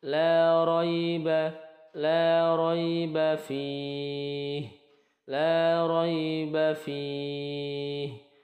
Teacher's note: fih ini dibaca panjang, boleh 2 harokat atau 4 harokat atau 6 harokat. Ini dihukumi namanya bacaan mad arid lis sukun.